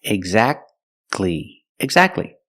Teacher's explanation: see the t is between consonants so we don't pronounce it you don't say exactly exactly don't pronounce a T exactly you go from the C Sound to the L Sound